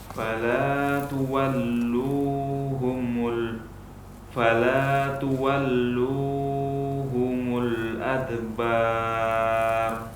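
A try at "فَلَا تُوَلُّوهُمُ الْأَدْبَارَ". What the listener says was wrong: Di sini lu-nya memanjang karena memikirkan huruf yang setelahnya. Dan ini momen yang tidak diperbolehkan.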